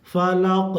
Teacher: قاف میں قلقلہ، یعنی قاف کی آواز لوٹے گی، ٹھیک ہے؟ کیونکہ یہاں پہ جب رک رہے ہیں تو قاف ساکن ہو جا رہا ہے، اور حروف قلقلہ 5 ہیں، قاف، طا، با، جیم، دال، جس میں سے قاف آیا ہے۔